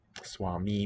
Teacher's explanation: Compensatory lengthening, another theme for the evening. Swami, both vowels long in the nominative singular